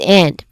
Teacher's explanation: and is often reduced to end, which has a schwa sound in the beginning, or maybe n with no clear letter D sound. It is often, reduced, especially in fast speech or in conversational English.